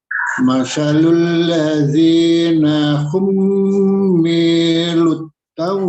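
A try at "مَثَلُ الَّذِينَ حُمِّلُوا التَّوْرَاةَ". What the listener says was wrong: Hummilut, ya. Jangan ada jedanya. Matsalul ladzina hummilut Taurah.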